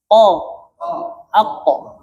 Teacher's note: Ko mengalir atau tertahan? Ko. Ako. Apa tuh? Tertahan. Berarti apa? Syiddah.